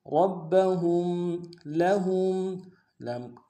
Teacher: موٹا ادا کریں گے، با کے اوپر تشدید زور دیں گے، ہا کو میم ساکن کے سامنے لانا ہے، میم ساکن میں غنہ کریں گے